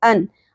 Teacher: غثاء، ان، حمزہ کے اوپر 2 زبر تنوین ہے، ان، اور یہاں پر اظہار ہوگا، یعنی ان کی آواز آپ نے کلیئر کر کے پڑھنی ہے